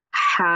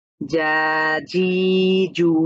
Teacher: এটা যেহেতু খাড়া জবর হয়েছে এক আলিফ টেনে পড়বো আমরা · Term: মাদের হরকত